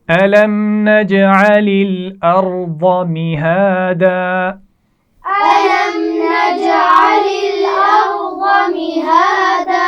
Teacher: ارض را موٹی پڑھی جائے گی، ضاد بھی موٹا پڑھا جائے گا. ضاد کا مخرج ہے زبان کا کنارہ اور اوپر کی داڑوں سے لگا کر یہ ادا کیا جاتا ہے. · أَلَمْ نَجْعَلِ جیم پر قلقلہ ہوگا